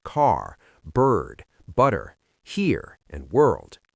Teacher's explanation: American English is rhotic, an American will fully pronounce the R in words like car, bird, butter, here, and world.